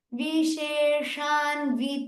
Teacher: the first sha should be a little more softer than the second sha. The Shankara sha make it a little softer.